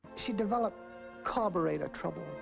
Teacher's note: it's just down down down down down down in Pitch this shows us that carburetor is distressed word she doesn't say